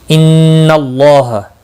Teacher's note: نون مشدد پر غنہ ہوگا، اللہ کا لام زبر کی وجہ سے پر پڑھا جائے گا، اس کے اوپر کھڑی زبر بھی ہے، ایک الف کے برابر کھینچ کر پڑھیں گے۔